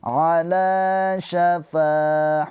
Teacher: Fa juga panjang dua harakat. Mad thobi'i. Alif sebelumnya harakatnya fathah.